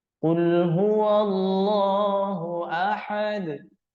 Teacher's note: pada lafzul jalalah panjangnya itu dua harakat tidak boleh kita lebihkan jadi tiga bahkan sampai lebih dari tiga harakat enggak boleh banyak